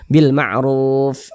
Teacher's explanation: Ini kita baca Al-Quran nih, kemudian kita berhenti nih atau berwaqaf nih tepat di huruf fa. Sedangkan huruf fa ini dia tidak dibaca panjang, makanya kita sukunkan atau kita matikan